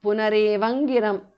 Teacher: Anuswara changes to nga, because of sandhi.